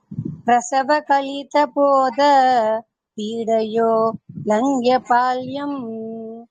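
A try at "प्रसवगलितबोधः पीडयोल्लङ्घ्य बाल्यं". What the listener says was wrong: இஃப்ங்கிற சத்தம் என் காதுல விழணும். அந்த விசர்க்கம் எடுத்தா ஒரு நிமிஷம் நில்லுங்க. அந்த விசர்க்கத்தை எடுத்துட்டு நாம சொல்றோம் அப்படின்னா அந்த இடத்துல பக்கத்துல பா இருக்கு. ஹாஃப் பா உச்சரிக்கணும். இஃப்ங்கிற சத்தம் கேட்கணும்.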